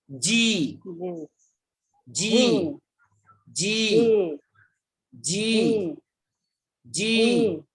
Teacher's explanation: জি অর্থাৎ আপনার যে জিহ্বা আছে জিহ্বার আগা সামনের উপরের দাঁতের মাড়ির গোড়ার সঙ্গে লাগাইয়া